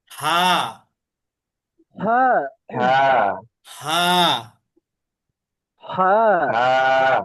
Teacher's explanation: হামজা আর হা একই জায়গা থেকে কণ্ঠনালী শুরু থেকে